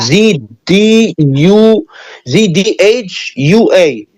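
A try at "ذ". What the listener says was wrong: Don't mix the D. Not D. Z H A W. Z H A W. Z H.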